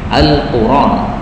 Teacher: Memindah itu artinya harokat alif atau harokat hamzah ini dipindahkan kepada huruf sebelumnya, dipindahkan pada ra. Kemudian hamzahnya dihapus. Maka karena hamzahnya dihapus menjadi Al-Quran. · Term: bacaan naql